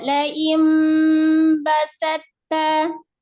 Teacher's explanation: Di nun sukun bertemu dengan baknya diiklabkan dulu, ada gunnahnya.